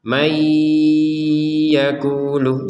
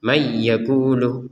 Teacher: nun sukunnya dimasukkan ke ya disertai dengungan. May yaqulu, jangan lupa dengungannya.